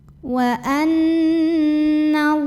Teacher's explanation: Maka alif lam ini dilewatin, tidak perlu dibaca ya. Dari nun langsung tekan ke lam berikutnya. Jadi ini biasa juga disebut dengan idgham syamsi.